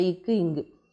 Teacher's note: நாவினுடைய முதற்பகுதி அன்னத்தினுடைய அடிப்பகுதியை தொடுறதுனால பிறக்கக்கூடியது